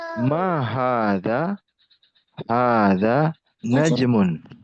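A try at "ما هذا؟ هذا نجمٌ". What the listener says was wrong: Sahih. Taib.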